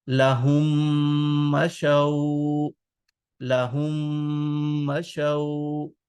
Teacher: Is a letter which has sukoon, a sakin letter is followed by tashdid, then this sakin harf, this sakin letter will not be pronounced. So we skip this meme and we join ha with meme, second meme